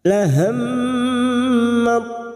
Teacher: Mim yang bertasdid gunnah musaddada kita dengungkan selama 2 atau 3 harokat.